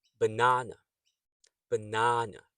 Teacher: you can hear that the second sound is stressed na